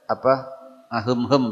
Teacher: suara mim tahan sebentar dalam kondisi bibir tidak dirapatkan tidak dikawet begitu tidak didedet jadi antai rileks dalam kondisi dengung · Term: Ikhfa Syafawi